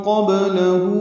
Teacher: ومن قبلہ میں نون ساکن کے بعد قاف آنے کی وجہ سے اخفا ہے، قاف پر ہے، با ساکن کی قلقلہ ہے، لام باریک ہے، الٹا پیش مد صلہ ہے، 2 حرکات لمبا ہے۔